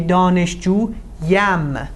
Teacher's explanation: you use a euphonic ی, something that intervenes in between to make the pronunciation easier · because the word ends in a long vowel, and you have two vowels together, you use a euphonic ی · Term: euphonic ye